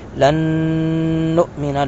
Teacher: نون ساکن کے بعد نون مشدد ہے یہاں پہ ادغام با غنہ کریں گے